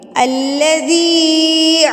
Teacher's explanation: ذال کو ہم 1 الف کے برابر کھینچیں گے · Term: یا مدہ